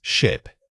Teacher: Remember to keep the vowel short and crisp here. Don't let your sound stretch, it should pop out quickly. Think of a small, contained burst of air for this word.